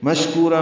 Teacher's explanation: مشکورہ میں شین ساکن ہے، اس میں ہمس اور تفشی ہے